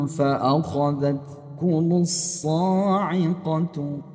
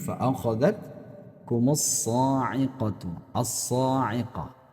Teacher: Al-nya dileburkan ke dalam huruf shad. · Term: asyamsiyah